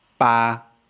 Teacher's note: I'm really bored, robotic, flat tone.